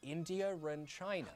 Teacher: in regular RP, we'd join them with an R. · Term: intrusive R